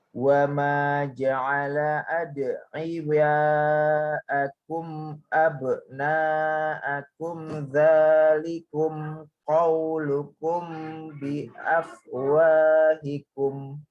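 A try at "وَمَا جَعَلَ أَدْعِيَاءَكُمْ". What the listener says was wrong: Wa ma ja'ala ad'iyaakum panjang lagi, Pak. Dzalikum qaulukum. Nah, di situ ada ditahan juga.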